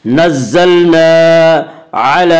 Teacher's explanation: لام کے اوپر کھڑا زبر ہے، کھڑا زبر کو ایک الف کے برابر کھینچ کر پڑھتے ہیں